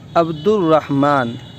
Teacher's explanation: را جب بولنا ہے تو زبان اور اوپری تالو سے جا کے مل رہا ہے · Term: حروف شمسی